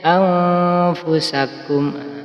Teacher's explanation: Harus diingat-ingat hurufnya supaya Anda ketika bertemu dengan bacaan ikhfa langsung Anda baca samar dan mendengung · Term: ikhfa hakiki